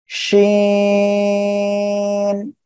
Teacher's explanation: উপরে তালুর সঙ্গে লাগিয়ে শা শা শব্দ করে এই অক্ষরটি উচ্চারণ হবে